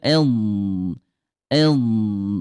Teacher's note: dia lemah suaranya mengalir